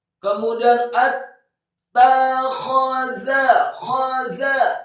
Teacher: Setelah ta yang tasydid fathah satu harokat, kemudian ada huruf kha yang fathah. Dibaca tafkhim tebal serak fathah satu harokat.